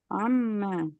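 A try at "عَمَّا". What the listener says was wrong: Ain. Buka mulut dulu. Buka mulut dulu. Buka mulut ya. Terus kerongkongan ditekan dengan energi. Buka mulut, tekan ke kerongkongan dengan energi. Jadi harus pakai energi itu. Jadi beda antara A dengan Ain.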